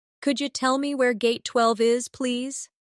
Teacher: In natural speech, could you sounds like could ya.